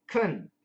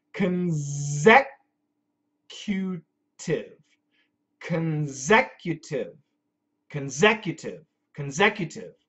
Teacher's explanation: We do not say consecutive. We say kun with a schwa. Kun. And then a Z sound.